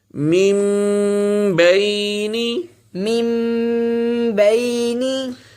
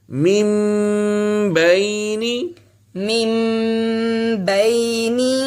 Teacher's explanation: تو یہ غنے کا دوسرا اصول ہے کہ اگر نون ساکن کے بعد با آ جائے تو ہم نون کو میم سے بدل دیتے ہیں اور پھر جو ناک میں آواز لے کے جاتے ہیں اور اس کو کھینچ کر پڑھتے ہیں اسے غنہ کہتے ہیں.